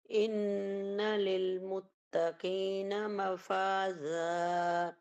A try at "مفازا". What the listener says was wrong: ابھی بھی آپ زال پہ مخرج لگا رہی ہیں، آپ لگا رہی ہیں زبان کی نوک باہر دانتوں کی طرف، ٹھیک ہے، اوپر والے نہیں، اس کا زبان نہیں لگے گی، اس میں اوپر نیچے کے دانت ملائیں گے آپس میں، یہ والی آواز آئے، مفاز۔